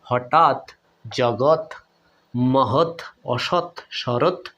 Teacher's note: ত এর অ স্বরধ্বনিটা উচ্চারণ হয় নাই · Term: খন্ডত